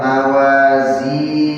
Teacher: Sama juga ayat ke-8 mawazinuh langsung lepas. Zinuh setelah dua harakat langsung lepas ya